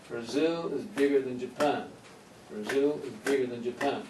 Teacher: even though we have eight syllables here twice the number of syllables the stress points are three